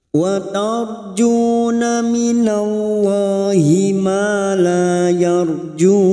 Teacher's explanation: ra sukun yang sebelumnya fathah kita baca tafkim